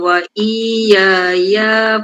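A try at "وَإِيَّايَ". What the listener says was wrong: kedua tuh jangan panjang waiyaya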